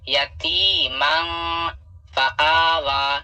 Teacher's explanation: یہاں پہ تنوین ہے اور تنوین کے بعد یہاں فا ہے, فا حروف اخفا میں سے ہے, یہاں بھی اخفا ہوگا. من اس طرح پڑھنا ہوگا یہاں پہ یتیمن فآویٰ.